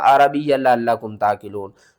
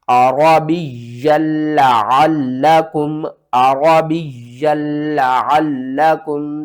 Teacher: शाद वाले हर्फ को हमने 2 बार पढ़ना है, सख्ती के साथ पढ़ना है और पिछले हर्फ को अगले हर्फ के साथ मिलाना है।